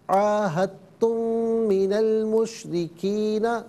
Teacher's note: میم جو ساکن ہے اسے من کی میم کے ساتھ ملا کر میم کی آواز کو غنّے کے ساتھ ادا کریں گے · را کے نیچے زیر را کو باریک کر کے پڑھیں گے · عاہدتم میں دال کی آواز نہیں بلکہ تا کی آواز کو ادا کیا جائے گا